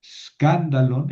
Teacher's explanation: Nota como escándalon es una proparoxítona.